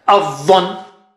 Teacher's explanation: A is low and Dha is very thick and high.